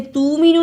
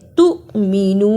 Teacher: تؤمنو، اسے تومنو نہیں پڑھنا، تا پیش حمزہ تو، جس حمزہ پر جزم ہو اس پر تھوڑا جھٹکا لگانا ہے